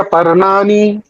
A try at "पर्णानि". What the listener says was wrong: हाँ, ये नी आपका दीर्घ आ रहा है। वो हाँ रस्व, रिस्ट्रिक्ट दैट, ट्यून को रिस्ट्रिक्ट करना है, हाँ। इसलिए मैं बोला था, ट्यून में मत गाइए, ट्यून में गाते गाते ना हम अपना वो उसको लंबा